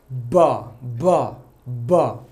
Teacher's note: There should be vocal cord vibration while pronouncing B sound. B sound is stop sound.